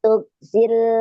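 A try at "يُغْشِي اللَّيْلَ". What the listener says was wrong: kalau tug titiknya di atas, ini kan di bawah.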